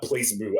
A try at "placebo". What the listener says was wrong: It doesn't say boo. It says ba.